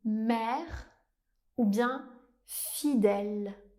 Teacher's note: En français on a aussi le son /ɛ/ ouvert